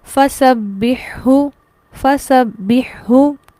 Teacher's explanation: ہماری شرط مکمل طور پر پوری ہو رہی ہے، لیکن یہاں پر ادغام نہیں ہوتا. ہا اور ہا ملا کر نہیں پڑھے جاتے، نہ تشدید کے ساتھ پڑھے جاتے ہیں، انہیں ایسے ہی الگ الگ پڑھا جاتا ہے